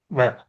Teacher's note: அதே மாதிரி பல் இதழ் இயைய பல்லோட இந்த இதழ் ஒட்ட வகாரம் பிறக்கும். பாருங்க, வ என்றக்குள்ள பல்லோட மீட்பல்லோட உள்பல்லோடையும் அந்த ரெண்டுக்கு நடுவுல உதடு போயிட்டு வரும் வ. அப்ப பல் இதழ் இயைய வகாரம் பிறக்கும்.